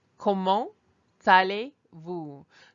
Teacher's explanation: Notice that I'm almost saying the T as if it's attached to the second word. The last letter is in the first word becomes the first sound in the second word. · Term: elision